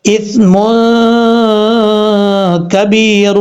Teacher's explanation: یہ نون تنوین کا اخفاء ہے، ایک الف کی مقدار غنہ کر کے پڑھیں گے، با کے بعد یا ہے، یا ساکن ہے، یا ساکن سے پہلے زیر ہے، اس لیے یہاں پہ یا مد ہے، ایک الف کی مقدار لمبا کر کے پڑھیں گے، کبیر اس طریقے سے، اسم کبیر۔